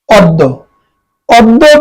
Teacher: ব্যঞ্জন বর্ণ থাকলে আদি অ এর উচ্চারণ উকার হবে মানে ও এর মতন হবে